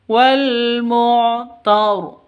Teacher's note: Ro-nya ro tafkhim tebal.